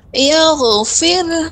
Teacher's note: Tebalkan ibu ghainnya dan alirkan. Yaghfir. Jangan mantul.